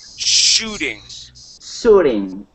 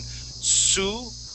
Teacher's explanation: you're pronouncing that sh as an s